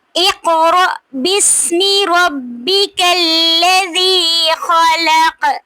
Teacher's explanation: इक़ पे काफ साकिन पे कलकला हो रहा है।